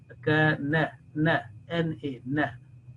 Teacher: there should be no nasal sound at the end or any any tinge of nasal sound